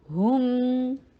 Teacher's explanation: ہا کے اوپر ضمہ، ہونٹوں کو گول کیا جائے گا، میم کے اوپر واپس لایا جائے گا